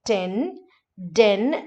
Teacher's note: And then again, the last point here is that you have these alveolar plosives t and d in RP. But instead of t and d, like ten, den, etc., Indians have a tendency to make it retroflex sounds.